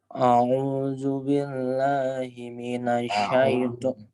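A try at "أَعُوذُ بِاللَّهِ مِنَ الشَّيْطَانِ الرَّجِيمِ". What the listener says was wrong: A'udzu. Bukan auzu. A'udzu. A. Jelas A-nya. A'udzu.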